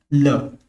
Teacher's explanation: ल को बोलते हैं पार्श्विक, जिसके उच्चारण में हवा जीभ के पार्श्व यानी कि बगल से निकल जाए, तो इसको बोलते हैं पार्श्विक।